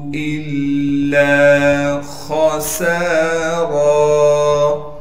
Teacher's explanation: لام پر تشدید ہونے کی وجہ سے تھوڑا ٹھہراؤ رکھیں گے اور لام کے بعد الف مدہ ہونے کی وجہ سے لام کو ایک الف کے مقدار کھینچیں گے، خا کو موٹا کر کے پڑھیں گے، سین کے بعد الف مدہ ہونے کی وجہ سے سین کو ایک الف کے مقدار کھینچیں گے، را پر دو زبر ہونے کی وجہ سے جب وقف کریں گے پھر را کو ایک الف کے مقدار کھینچیں گے۔